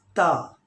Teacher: ज़बान का जो कॉर्नर है, ज़बान की चोटी को ऊपर वाले दांतों के जड़ में हम टच करेंगे तो ता को हम अदा कर सकते हैं, लाइक त। ख्याल रखना है कि ये ता को बारीक आवाज़ से पढ़ना है, ऐसा ना हो कि तो अदा हो जाए। Okay, please take care, pronounce ता, not to, okay?